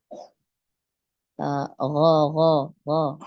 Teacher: Huruf ghain ini diucapkan dari area untuk berkumur.